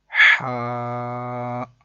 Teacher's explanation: یہ ہا حلق کے درمیان والے حصے سے ادا ہوتا ہے